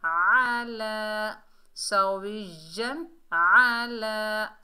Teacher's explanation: आइन को हलक के दरमियान से अदा करेंगे।